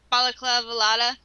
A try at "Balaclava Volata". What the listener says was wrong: I think there was an L in there that shouldn't have been there, but whatever. Balaclava, I think.